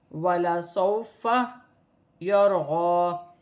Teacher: یہاں پر واو ساکن سے پہلے زبر آ رہی ہے تو واولین بنے گی، اسے کھینچا نہیں جائے گا. را ساکن سے پہلے زبر ہے تو را موٹی پڑی جائے گی. غاد پر کھڑی زبر ہے تو غاد ایک الف کی مقدار کھینچ کے پڑھی جائے گی، جیسے یرغا.